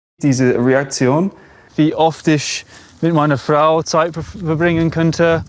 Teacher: He replaces the r sound with either the English r or a tapped r, depending on the environment.